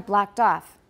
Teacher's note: so off is going to be higher it sounds like it's got more stress but that's not really stress that's intonation